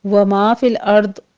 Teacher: وما فی الارض، لام کو بھی سٹاپ کرنا ہے، را کو بھی مفخم پڑھتے ہوئے ہم نے سٹاپ کرنا ہے، قلقلہ نہیں کرنا